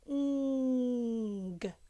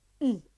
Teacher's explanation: The tongue goes right to the back of the top of your mouth.